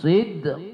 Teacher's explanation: Karena dia berada di akhir kalimat qalqalah kubra ya. Jadi dia lebih kuat bunyinya.